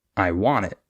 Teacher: instead of stressing the I we would stress the want